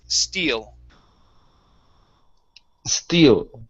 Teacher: Okay, when there is not an S, you're saying steels. All right, instead of steels, end on the L. The word is steel.